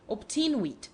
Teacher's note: logic demands that the second letter should be a B, while to the ear, the sound is rather that of P.